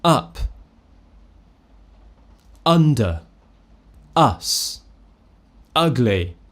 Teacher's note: I'm not smiling, I'm not rounding my lips, my tongue is very central, very relaxed, my jaw is just slightly open, more open than a schwa, and remember, if I were to push my tongue more forwards and smile, it would sound more like an a, which is the most common mistake. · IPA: /ʌ/